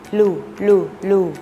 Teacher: ให้ห่อริมฝีปากพร้อมทั้งกระดกปลายลิ้นแตะบริเวณฐานฟันบน เปล่งเสียงลูลูลูแล้วพูดคำว่าลูกลูกคำที่ขึ้นต้นด้วยเสียงพยัญชนะขอไ